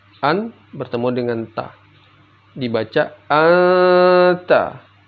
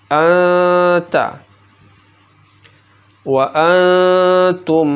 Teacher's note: jadi nun matinya dibaca samar